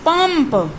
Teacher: प वर्ग का पांचवा म, इसीलिए हम यहाँ जब पंप का उच्चारण करते हैं तो न का नहीं, म का।